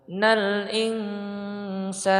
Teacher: Nal insana, nun mati bertemu dengan sa, ini ikhfa ya, maka dia disamar-samarkan disertai dengan khayshum ya. Khayshum dia berdengung di rongga hidung